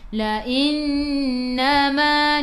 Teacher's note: Qa 2 harakat, ada alif mad asli. La innama, nun ada sabdu, tekan ke dalam nun dan dengung 2 harakat. Wajibul gunnah, wajib dengung.